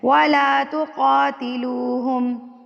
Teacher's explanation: قاف کے اوپر کھڑی زبر ہے تو کھڑی زبر کو آپ نے حرکت کے برابر کھینچ کے یعنی کہ لمبا کر کے پڑھنا ہے